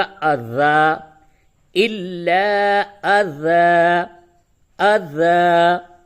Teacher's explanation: زبر پہ، اس سے قبل بھی سبق میں بتایا گیا کہ دو زبر پہ جب بھی وقف کریں گے تو اس کو الف سے بدلتے، الف سے بدل کے پڑھتے ہیں